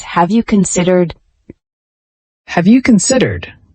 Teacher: Use a rising intonation for the question, making it inviting.